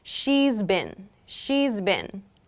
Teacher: That's what reduce means, to make something smaller or to make something shorter. We reduce sounds in sentences like these by making has been into z been. So in this case, she has been, if I follow this pattern, reduces to she's been.